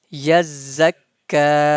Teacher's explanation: za and kaf, both of them have shadda sign, and we're gonna pronounce za twice and kaf twice as well. Ya za, ya is connected to za.